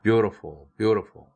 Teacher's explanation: 앞에 beautiful은 t가 모음 사이에 꼈으니까 플랩 돼야 되죠.